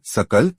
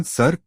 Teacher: स के उच्चारण में जिह्वा दांत को स्पर्श करती है